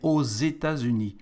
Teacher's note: For the States, because it's a plural, we add an X, and the X for the liaison here between the two words is like a Z, so we say aux États-Unis.